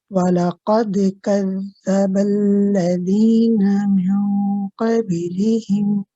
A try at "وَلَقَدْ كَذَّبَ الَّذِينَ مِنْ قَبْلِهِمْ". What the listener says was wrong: So we've got also just be careful of kasras property, not lihim, lihim.